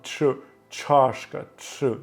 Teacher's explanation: і т і ш разом дають звук ч